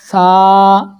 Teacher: आईना ले लें, आईने में देखें कि ज़ुबान का सिरा ऊपर के दांतों के अंदरूनी किनारे में लग रहा है। सा ज़ुबान ज़्यादा बाहर नहीं निकालेंगे, थोड़ी सी बात निकालेंगे। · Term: हुरूफ लिसविया